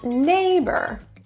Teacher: to have stress in the first syllable so words like people two syllable words the first syllable is stressed